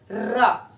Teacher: जीभ के आगे का भाग हल्का सा ट्विस्ट होके मुड़कर अग्रभाग को टच करता है, थोड़ी देर तक दोनों आर्टिकुलेटर्स आपस में टकराते हैं, र। बहुत जल्दी जल्दी बोलते हैं र तो समझ में नहीं आता, बट प्रॉपर प्रोडक्शन है र। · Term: ट्रिल